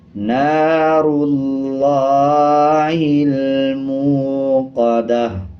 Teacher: آگے دیکھیں گول تا ہے، تا کے اوپر پیش ہے، جب وقف کریں گے تو تا ہا میں بدل جائے گا، اسی طرح پیش کو سائلنٹ کر دیں گے اور وقف کرتے ہوئے آدھے ہا کی آواز آئے گی۔